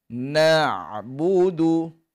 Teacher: Huruf Ain ni keluar daripada tengah kerongkong, nipis dan lunak. Cara dia kita kena sempit di tengah kerongkong.